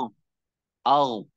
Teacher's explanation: Al ditebalkan suaranya ke langit-langit. Al sehingga tebal.